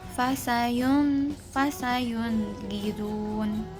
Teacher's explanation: Nah, jadi tidak ada tambahan durasi dalam pelafalan nun sukun. Lafal nun sukun secara jelas izhar tanpa memberikan guna tambahan.